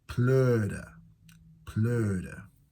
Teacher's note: you are saying a through O lips. So you say and then close them to an O.